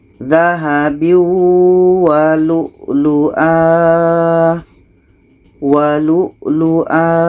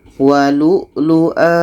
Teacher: Tanwin ini kita buang 1 barisnya, akhirnya menjadi seperti panjang alif. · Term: mad iwad